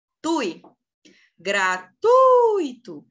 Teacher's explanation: é um ditongo não é um hiato é um ditongo Então qual que é a sílaba tônica é o teu ui